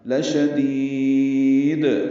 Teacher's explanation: اور شین جلدی پڑھیں گے، دال کو لمبا کریں گے اور دوسری دال ساکن ہے، اس پہ قلقلہ ہے وقفاً